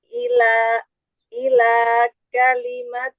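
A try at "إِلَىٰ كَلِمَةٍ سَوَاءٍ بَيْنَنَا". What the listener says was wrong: Jangan seperti terputus satu nafas.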